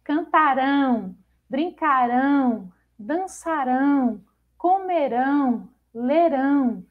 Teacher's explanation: Com a terminação -ão, as formas verbais são oxítonas, tendo a última sílaba como sílaba tônica.